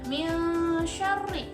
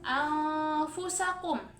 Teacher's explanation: kalau yang ikhfa itu dibacanya samar dan dibacanya dengung, kemudian suaranya itu disamarkan.